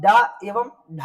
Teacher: जीभ का पहला हिस्सा शुरुआत का हिस्सा टकराता है। जब आप ड एवं ढ बोलेंगे तो आपका ये जीभ आपके आगे के हिस्से में मूर्धा में टकराएगी। आगे की जीभ आपके मूर्धा में टकराएगी। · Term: मूर्धन्य